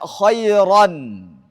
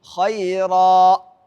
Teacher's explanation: Kalau kita berwaqaf, maka tanwinnya dihilang.